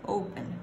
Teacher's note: En ningún momento dije una sílaba más fuerte que la otra, todo suena igual. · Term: no stress